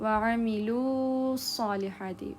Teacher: واو مد یہاں پہ اسکپ ہو جائے گا